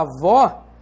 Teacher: esse ó tem timbre aberto e não timbre fechado e você sabe também que vota é a sílaba tônica da